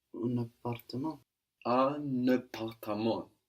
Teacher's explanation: So we have a liaison here. The N of un that we don't hear in un peu, it sticks to the A of appartement.